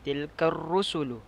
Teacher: ra dibaca secara tebal kerana ia berbaris di hadapan dan sebelumnya adalah berbaris atas